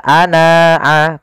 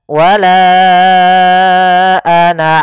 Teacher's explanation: pada bacaan Ana tidak dibaca panjang nanya